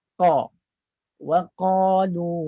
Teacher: Bibir tak buat apa-apa. Yang bekerja adalah bahagian pangkal lidah. Aqsal lisan tu. Bahagian pangkal lidah dinaikkan tinggi. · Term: qaf